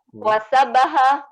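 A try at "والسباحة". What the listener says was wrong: Wasibaha. Bukan sabaha. Sibaha. Wasibaha.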